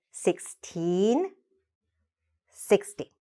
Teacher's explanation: So what you want to do is to make sure you elongate the first one and really shorten the second one.